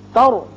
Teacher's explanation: تر را پر کریں گے اس لیے کہ را ساکن ہے لیکن پہلے زبر ہے